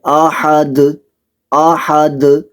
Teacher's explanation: دال پر قلقلہ کرنا ہے، وقف کی صورت میں قلقلہ خوب واضح ہونا چاہیے